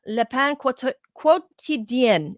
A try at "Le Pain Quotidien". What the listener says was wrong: Quotidien. You do not pronounce the U. It's as if it's just quotidien.